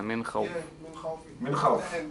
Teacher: You have a nun sakina followed by a kha. So kha is one of the letters of الإظهار. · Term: al-ilhar